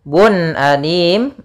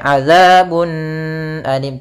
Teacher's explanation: caranya adalah membacanya Suara tanwinnya jelas yaitu UN Bun ketemu Alif tidak boleh adabun Alim tidak boleh tapi langsung